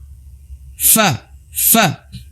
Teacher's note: Nah, bibir kita bertemu dengan ya ujungnya gigi seri kita. Ketika bibir itu bertemu dengan kedua ujung gigi seri kita, bagian atas ya, gigi seri atas ya, berarti bagian atas bukan bagian bawah, maka akan menghasilkan huruf fa ya.